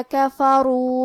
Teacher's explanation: کلمت کفروا میں را کا حکم ہے تفخیم، لہذا ہم حرف الرا کو موٹی آواز میں پڑھیں گے